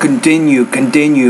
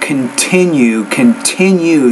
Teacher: you need to pronounce the T with more air